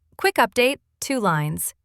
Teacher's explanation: with a gentle rise on quick and a low finish on lines. That low finish is a signal.